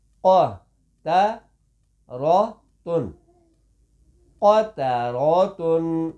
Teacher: قاف موٹا قا تا باریک اور را پر را موٹی اور تا باریک